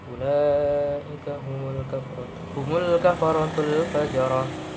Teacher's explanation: Ini roknya dibaca tafkhim. Tebal. · Ulaika ini mad wajib mutasil karena ada mad tabi'i atau mad asli bertemu huruf hamzah dalam satu kata. Mad wajib mutasil dibaca 5 harokat, panjangnya dibaca 5 harokat.